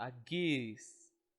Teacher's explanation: como é uma vogal longa, você dá uma força mais na garganta